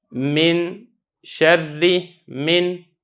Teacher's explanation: جب آپ من پڑھیں گے تو آپ کے ناک کے اندر آواز جائے گی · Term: غنہ آنی